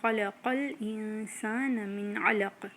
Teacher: من علق، نون ساکن کے بعد عین آ گیا ہے جو کہ تھروٹ لیٹر ہے، اور اس میں دوبارہ سے اظہار ہو جائے گا. ہم نون کو کلیئرلی پروناؤنس کریں گے.